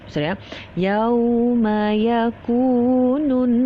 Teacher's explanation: ku adalah mad asli. Okey, mad asli. Jadi dibaca dengan kadar dua harakat. Jadi jangan panjang, jangan terlalu panjang, jangan terlalu pendek.